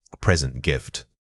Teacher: The difference is where the emphasis falls. When you are talking about a gift, it usually has the stress on the first syllable.